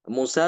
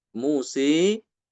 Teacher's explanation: seperti itu kalau Musa memang dia ada tiga bacaan itu ya Musa seperti biasa fathah ada yang dia baca dengan imalah Musi nanti ada yang dibaca dengan taklil taklil itu dia diimalahkan